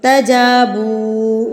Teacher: جیم کے اوپر زبر ہے، زبر کے بعد الف آ گیا تو اس کو میں لمبا کروں گی ، تجابوا، واو پیش کے بعد واو ساکن، اٹ مینز یہ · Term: حروف مدہ